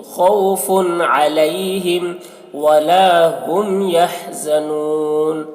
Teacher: خوف علیہم دیکھیے تنوین کے بعد حروف حلقے میں سے عین ہے تو یہاں پر اظہار ہوگا، جلدی پڑھیں گے تنوین کو